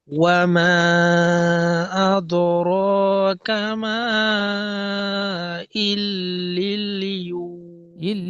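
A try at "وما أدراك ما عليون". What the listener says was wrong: লিল নয়, লি, লাম ইয়াজের লি, ইল্লিয়ুন।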